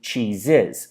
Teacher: So if we have the word cheese, which of course ends in an S, E, but it's pronounced as a Z, as a Z noise, from cheese to cheeses, it goes from cheese, and it turns into cheeses. So here we use the I and the Z noise, so the kit vowel and the Z